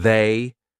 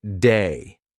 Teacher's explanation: The voiced TH, lots of English learners will pronounce it like a D. So instead of saying they, they'll say something like day.